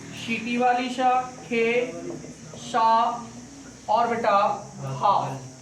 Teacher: सीटी वाली जो सा होती है ये बेटा तालु से, खे वाली सा होती है मूर्धा से, ये आपकी सरौता वाली सा होती है दंत से, और हा होता है कंठ से बोला जाता है। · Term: ऊष्म व्यंजन